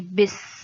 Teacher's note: زیر کی با کے نیچے زیر ہے، زیر کو جلدی اور نرمی سے ادا کیا جاتا ہے، تو ہم اس کو جلدی سے ملائیں گے اور سین میں سیٹی آئے گی